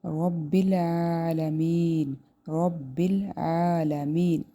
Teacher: عین کھڑی زبر آ، اس کو ایک الف کے برابر لمبا کریں گے